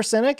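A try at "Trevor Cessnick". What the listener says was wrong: Cessnick? Yeah. There's extra S.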